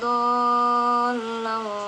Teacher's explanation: mad tabi'i bertemu dengan huruf yang bertasydid. Biasanya dibaca sepanjang 6 harokat. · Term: mad lazim